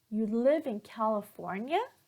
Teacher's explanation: notice here that all the intonation will go up towards the end of the sentence